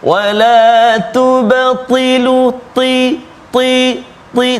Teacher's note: Memang dia sifat dia tebal, terangkat lidah kita, sempit rongga suara ataupun udara nak keluar bila sebut huruf ta.